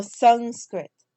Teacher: So my thought is that it's Sanskrit because of this ka, but it's Sanskrit with a nga, not with a dental half na, but it is a half nga